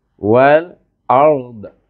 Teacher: lidah kita pergi kepada geraham mahraj huruf dad. Tapi lidah kita pergi ke siretan gaham kita.